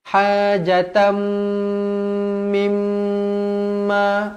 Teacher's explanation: tanwin tak selari bertemu dengan mim idgham ma'al gunnah, dengung 2 harakat. Kemudian mim yang bertanda sabdu wajibul gunnah pun sama juga dengung 2 harakat.